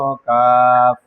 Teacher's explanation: জিহ্বার গোড়া থেকে একটু আগে বাড়াইয়া তার বরাবর উপরে তালুর সঙ্গে লাগাইয়া তার বরাবর উপরে তালুর সঙ্গে লাগাইয়া মধ্যখান পেঁচানো কাফ।